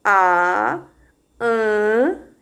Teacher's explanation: Então, se você articular essas duas vogais e colocar a sua mão aqui, você vai perceber A, an, que quando você tá falando o an, sai um ventinho bem leve aqui das suas narinas